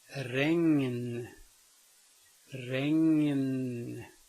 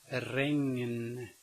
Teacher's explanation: Notice that I say the ng and then the n, regn. And it can be spelled with an N in front of a K, bank, bank.